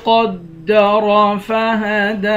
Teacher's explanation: قاف کو موٹا پڑھیں گے را کو بھی موٹا پڑھیں گے